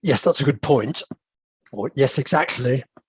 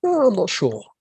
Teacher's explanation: when we agree by contrast we usually use a falling tone